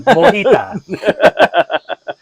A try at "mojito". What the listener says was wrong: Mojito. There's a toe at the end of the mojito. Mojita. It's not a margarita. it's a mojito.